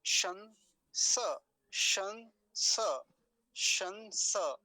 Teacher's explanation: तालव्य शकार है पहले, फिर दंतीय सकार है।